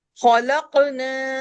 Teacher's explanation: خا موٹا، قاف موٹا، قاف پہ کلکلہ بھی ہوگا